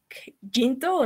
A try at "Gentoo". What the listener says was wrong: Yento. Pero como yento. Ahora, ya no saques el aire por lugares extraños.